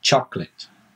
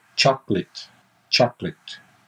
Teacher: you kind of have pronounced the o in the middle but you shouldn't